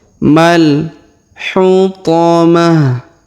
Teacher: Huruf ma langsung sambung ke alif lam qamariyah